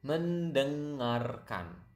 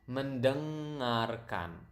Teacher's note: You can hear the nasal sound there, deng, kind of sound like French.